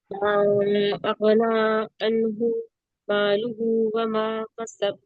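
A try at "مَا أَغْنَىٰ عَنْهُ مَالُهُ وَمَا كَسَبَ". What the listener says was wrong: دیکھیے کسب میں کاف ہے نا, پھر سے پڑھیے. اور ماں پہ دیکھیے, ماں پہ مد لگا ہے اس کو زیادہ کھینچیں گے, اغنا کے نون پہ کھڑا زبر ہے اس کو بھی کھینچیں گے, ٹھیک ہے.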